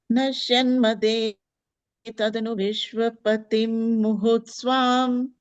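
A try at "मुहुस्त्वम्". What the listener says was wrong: Muhustvam, twa, not swam.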